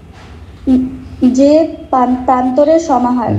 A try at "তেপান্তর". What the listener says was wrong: যে না, তে তে তে মানে 3, তয়কারে তে তে প্রান্তর, তে মানে 3, প্রান্তরের সমাহার কি সমাস বলা হলো?